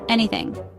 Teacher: It is a three-syllable word. Stress is on the first syllable.